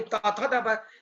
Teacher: ये पूरा दंती वर्ग है, इसको बोलते हैं दंत्य वर्ग